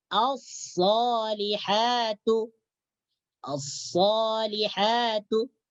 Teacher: Huruf shad termasuk daripada huruf asy-syamsiyah. Cara membacanya alif lam dimasukkan ke dalam huruf shad.